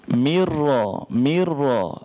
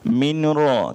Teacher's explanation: Bila ra tu dia bersyaddah, dia bersabdu. Bila dia bersabdu, kita tak payah sebut nun tu dah. Kita terus pi ra.